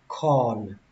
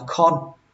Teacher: Các bạn nhớ kéo âm o ra một tí, tại vì nó có âm r ở đây, nó kéo dài ra. Corn. Các bạn đừng đọc là con.